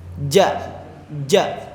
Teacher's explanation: Si nafas itu enggak keluar karena huruf ja itu kayak huruf yang menghentikan nafas sesaat. Ja. Karena kan huruf ja ini itu akan keluar ketika lidah kita menyentuh langit-langitnya.